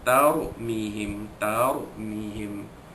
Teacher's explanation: ra sukun itu dibaca tebal kerana huruf sebelumnya huruf ta balik ke atas